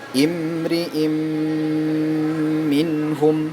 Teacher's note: Nah, ingat, didengungkan sebanyak 3 hitungan.